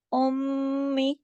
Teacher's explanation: गुन्ना हो रहा है मीम पे तशदीद की वजह से